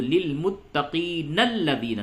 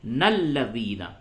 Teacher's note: اور اگر آپ ملا کر کے پڑھتے ہیں تو للمتقین الذین، نون کو لام سے ملائے، نلذین. اور یہاں پہ اگر آپ نے وقف کر دیا تو ہوگا الذین، حمزہ لام زبر ال، لام زبر لا، ذال یا زیر ذی، نون زبر نا، الذین۔